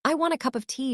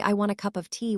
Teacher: I want a cup of tea should reduce of to uh if you say I want a cup of tea with strong stress on of, it sounds strange.